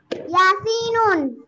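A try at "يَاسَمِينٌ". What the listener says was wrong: ইয়াসিন না তো ইয়াসমিনুন তুমি মুখে কলম সরাও কলম সরে বলো ইয়াসমিনুন বলো ইয়াসমিনুন ইয়াসিন না তো ইয়াসমি ইয়াসমি ইয়াস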